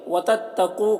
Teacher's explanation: قاف کو پر پڑھیں گے، واو مدہ ہے